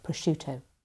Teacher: Prosciutto, it's got this cluster of SC in the middle, which makes often people think there should be a sk sound in there. But the I that comes after the C softens the SC to be a sh sound, not a sk sound. So it's prosciutto.